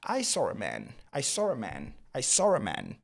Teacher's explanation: vous devez en arriver au point de constater cette liaison avec le ra qui vient s'incruster